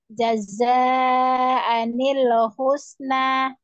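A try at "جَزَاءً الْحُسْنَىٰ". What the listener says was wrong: Ya, hati-hati lamnya jangan anil. Jazaanil husna. Hati-hati lamnya memantul.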